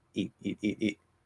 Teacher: It's the same E sound, but it's really short because I'm speaking more quickly.